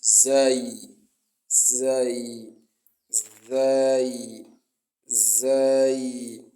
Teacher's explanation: It is pronounced between two incisors, your two incisors